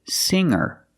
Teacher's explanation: the G is not pronounced with a hard G sound